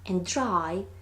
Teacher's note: sound D becomes post-alveolar, followed by post-alveolar sound R